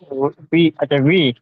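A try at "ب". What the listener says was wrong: হ্যাঁ বিটা পুরোপুরি যে বি বলে একদম পুরোপুরি যে একটা মানে একদম হচ্ছে কি যে স্পষ্ট যে বি বলি, ওই বিটা হবে না, একটু হালকা করে বি হবে, ভি, ভি এরকম উচ্চারণ হবে।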